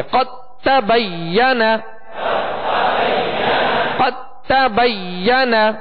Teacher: اب دال کو تا میں مکمل داخل کر دیا تو یہ مکمل ادغام ہے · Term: ادغام تام